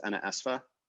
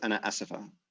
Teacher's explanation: that middle I vowel tends to be lost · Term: vowel syncope